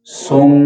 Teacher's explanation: سم، یہ جو آواز اتنی ہم نے ادا کی ہے یہ اس میم مشدد کے غنہ کی ہے، یعنی صاد کو میم سے ملاتے ہوئے اس میں غنہ ادا کریں گے